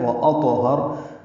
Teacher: طا ساکن پہ قلقلہ ہے اور را پر پڑھا جائے گا.